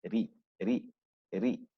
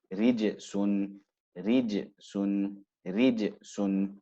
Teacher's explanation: when it carries a kasra, it becomes more flat and you use less of the mid of your tongue